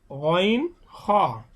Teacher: এরপরে বলা আছে যে হলকের শেষ ভাগ হয়, অর্থাৎ কণ্ঠনালীর শেষ ভাগ হইতে গইন হ, অর্থাৎ আমাদের মুখে খুব নিকটস্থ কণ্ঠনালীর যে স্থানটা সেখান থেকে উচ্চারণ হবে